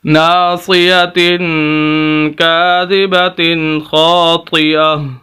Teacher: خاص تبدیلی یہ ہے کہ اس تا کو ہا سے بدلیں گے، یہ لفظ تا ختم کر دیں گے، اس کی جگہ ہا آ جائے گا۔ دوسری عام تبدیلی یہ ہے کہ اس ہا کو ساکن کر دیں گے، جہاں بھی وقف کیا جاتا ہے اس آخری لفظ کو ساکن کر دیا جائے تو ہا آخری لفظ ہوگا، تو اس وجہ سے ہم ہا کو ساکن کر دیں گے، یہ عام تبدیلی ہے۔